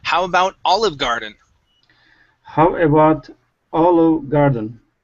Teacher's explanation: So we're going to stress olive and then come down on garden.